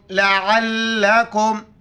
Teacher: عین کو گلے ادا کر کے لام کے ساتھ ملانا ہے